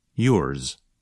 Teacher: If you listen carefully, you can hear a bit of the sound of the letter S at the end of a word like yours. So the sound of Z is not as strong or as long as in a word like zero. Instead, it's more like a Z with a little S at the end.